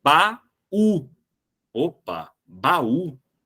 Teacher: o u forma iato com a vogal anterior com a ele se separa do a e ele fica sozinho na sílaba